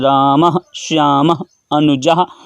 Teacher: और विसर्ग का उच्चारण स्थान कंठ होता है